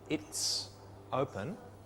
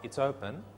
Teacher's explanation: the words go together they sit against each other there's no break between the words or the syllables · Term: reduced forms